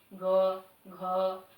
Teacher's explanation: हम न चाहते हुए भी अ लास्ट में बोल देते हैं। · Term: स्वर वर्ण अ